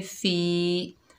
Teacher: ये या मद्दा है, 1 अलिफ की मिक़दार खींच कर पढ़ेंगे